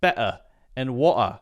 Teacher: you also hear a complete stop sound where it's better and water